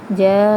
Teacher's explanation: 4 سے 5 حرکتوں کے برابر لمبا کرنا ہے، اس کو مد متصل بھی کہتے ہیں۔